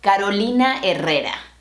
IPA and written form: ka.ɾo.ˈli.na ɛ.ˈrɛ.ɾa (Carolina Herrera)